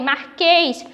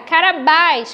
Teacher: Marquês, a letra E fica com um som mais fechado, Carabás com um som mais aberto, porque é acentuada com acento agudo.